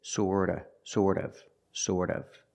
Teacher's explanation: remember the T in sort of is pronounced with a fast D